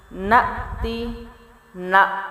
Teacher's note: تا جو ہے اس کی زیر ختم ہوگی لیکن تا ختم نہیں ہوگا، تا کا ساؤنڈ رہے گا